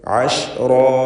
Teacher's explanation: റായിനും അലിഫിനും തഫ്ഖീം ഉണ്ടായിരിക്കണം. റാ എന്ന് സ്വരഭാരത്തോടെ ഉച്ചരിക്കുക.